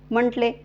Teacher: बोलणी तर ल चा उच्चार कसा होणार पटकन होणार म्हटले तर ट चा उच्चार कसा अपूर्ण आणि तोकडा होणार आहे